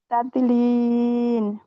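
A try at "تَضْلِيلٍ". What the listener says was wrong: জি আপু, এখানে তাদের লিন লিন বলছে, লাস্টে নুন উচ্চারণ হচ্ছে, নুন উচ্চারণ হবে না। লিল। জি, একটু খেয়াল করবেন।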